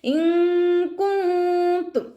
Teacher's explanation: നൂൻ സാക്കിനയെ മറച്ചു വെച്ചിട്ട് മണിച്ചോതി കൊടുക്കുക കേട്ടോ. നൂനിൻ്റെ സൗണ്ടിനെ വ്യക്തമായിട്ട് കേൾപ്പിക്കരുത്, ഒന്ന് ഹൈഡ് ചെയ്തിട്ട് ഉച്ചരിക്കുക. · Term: ഇഖ്ഫാ